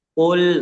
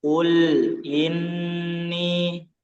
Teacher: jangan lupa di bagian lam dia juga mengalir ya, meskipun enggak sempurna tapi tetap mengalir.